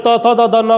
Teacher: जब त थ द ध न का उच्चारण हम कर रहे होते हैं तो जिह्वा दांतों के पिछले हिस्से को स्वतः ही जाकर के बार बार स्पर्श कर रही होती है